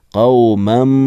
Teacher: قومن یعنی دو زبر کی تنوین نہیں پڑھی جائے گی، قومم ایسے پڑھیں گے